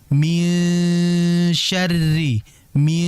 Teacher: Nah, kalau ming itu sepertinya langsung ke hidung. Ini salah ya. Tetap eng-nya itu samar jelas. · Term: ikhfa